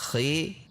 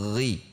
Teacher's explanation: Sementara pada huruf kho sifatnya adalah hamas dan rohwah, sehingga cara membunyikannya dengan mendorong udara.